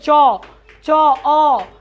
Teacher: जैसे च का उच्चारण मतलब च अ, मतलब तालु के द्वारा आ रहा है